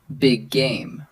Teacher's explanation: Two G sounds blending into one.